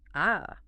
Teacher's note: So the first tone, this one is high and sustained. It just sits at the top of your comfortable speaking range and stays totally flat.